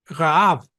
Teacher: Los judíos nacidos en Israel la pronuncian como la R francesa, Raab, ¿verdad? Con la glotis, ¿verdad? Rubén, Rosh.